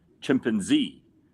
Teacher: I put the emphasis on Z. Americans put the emphasis on pan.